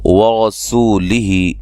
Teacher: ورسولہ را کو موٹا ادا کریں گے